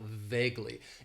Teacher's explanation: it has two syllables and the stress is on that first syllable